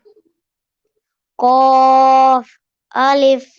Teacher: قاف الف جی تو یہ حروف مستعالیہ میں سے ہے. قاف حروف مستعالیہ میں سے ہے. اس کو پر یعنی موٹا پڑھیں گے.